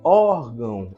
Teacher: na palavra órgão órgão a sílaba tônica é o or Então vou marcar aqui ó essa é a sílaba tônica aí